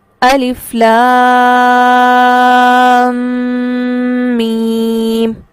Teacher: الف لام میم. تو لام کے اختتام پر جو میں رک رہی ہوں اور ناک میں آواز کو ٹھہرا رہی ہوں، یہ اس تشدید کی وجہ سے ہے، اور مد کے ساتھ اس کو تشدید کو پڑھنا اور غنہ کرتے ہوئے پڑھنا، یہ ہے مد لازم حرفی مستقل.